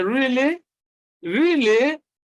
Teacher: you can also express excitement by using the rising tone.